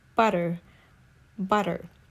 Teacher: In British accent, sometimes they don't pronounce T sound when it is between the vowel A, E, I, O, U.